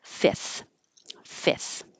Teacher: Fifth, this was an example of making something more easy to pronounce because fifth with an F before the TH is difficult. So just drop it.